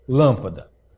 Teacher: Ela tem que ter qual sílaba tônica? A antepenúltima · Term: proparoxítona